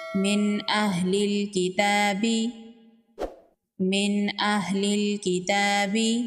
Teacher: نون ساکن کے بعد اظہار کے حروف میں سے حمزہ ہے، تو یہاں پر نون کا اظہار ہوگا، نون کو ظاہر کر کے پڑھیں گے۔ من اہل الکتاب، من اہل الکتاب، لام کو لام کے ساتھ میں لائیں گے، الف کو نہیں پڑھیں گے۔